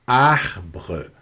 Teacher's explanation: O R no francês, ele tem uma característica muito marcante, porque ele sempre vai ser pronunciado na garganta, de uma forma para arranhar mesmo a garganta. Então, sempre você vai forçar um pouco o R mais aqui na garganta.